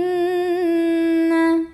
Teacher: utama Hai innnayah ada ghunnah musyaddadah karena ada Nun yang bertasydid cara membacanya cukup didengungkan punya n-nya ditahan kurang lebih dua harokat